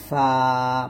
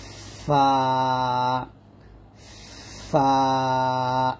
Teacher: নিচের ঠোঁটের পেট সামনের উপরে দুই দাঁতের আগার সঙ্গে লাগিয়ে উচ্চারিত হয় ফা। বাতাস বের করবেন ফা ফা এরকম ভাবে।